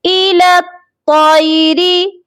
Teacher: یہاں پر لام کو تو کے ساتھ ملائیں گے، درمیان میں آپ دیکھ لیجئے 3 حروف ہیں جو بنا حرکت کے ہیں، یا، الف اور لام، یہ تینوں حروف نہیں پڑھے جائیں گے۔